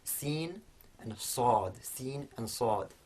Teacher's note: So whereas sin is quite light, we have sad, which is heavier, and the way that heaviness is produced is that the front of the tongue is in contact with the same point of the mouth in both sin and sad, but for the sad that contact is harder, and also the back of the tongue is raised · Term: emphatic version of sin